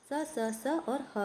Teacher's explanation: इनका उच्चारण स्वास के घर्षण से होता है। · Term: ऊष्म व्यंजन